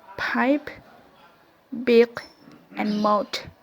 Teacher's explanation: the articulator are the two lips active lower lips and passive upper lip so the upper lip usually moves to at least a little